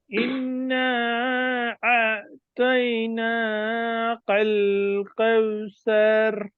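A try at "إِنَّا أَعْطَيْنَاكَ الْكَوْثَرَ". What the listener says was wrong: দেখেন এই যে এখানে কফের মতো উচ্চারণ হয়ে গেছে কাল কয়াকার ল কাল কাল কাল কাল কাউসার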